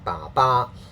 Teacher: in Cantonese we don't usually use our voice in consonant sounds like ba ba